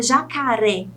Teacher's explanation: Como a palavra jacaré, por exemplo, a sílaba tônica é a última, é o ré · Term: oxítona